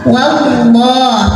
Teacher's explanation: Wallah ada lam jalalah yang dibunyikan secara tafkhim. Karena huruf sebelumnya waw bergaris fathah, maka bacanya tebal. Wallah, maka lidah dinaikkan.